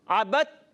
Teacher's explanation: با دال تا زبر بت. یہ دال کو حذف کر دیں گے, یعنی دال تا میں ایسی ملی کہ غائب ہو گئی